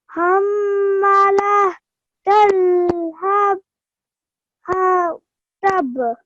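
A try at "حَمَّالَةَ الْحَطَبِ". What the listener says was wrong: But make sure you're stretching the sound of the ma. Hamma.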